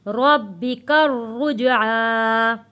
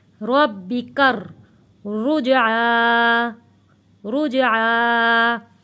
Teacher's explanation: کاف جڑے گا تشدید والے را کے ساتھ، اس لیے ہم نے یہاں پہ پڑھا ہے کر.